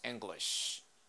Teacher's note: Aquí el acento está en la primera sílaba, así que esa I al final está en una sílaba no acentuada, se pronuncia E, decimos English.